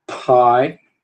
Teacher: p vai ser uma oclusiva bilabial desvozeada e vai ser aspirada sempre que tiver em posição tônica